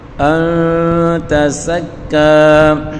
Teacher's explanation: نون ساکن کے بعد تا حروف اخفا کا ہے، یہاں غنہ کر کے پڑھیں گے